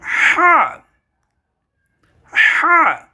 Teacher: হলকের মধ্যখান, হলক আমাদের গলার যেই ইয়েটা আছে, গলাটা আছে, সেটাকে একত্রে হলক বলে। হলকের মধ্যখান তথা গলার মাঝখান থেকে উচ্চারিত হবে হা, হা। যারা পুরুষ আছেন তাদের একটা ভাঙা আছে, ওই ভাঙা থেকে উচ্চারিত হবে।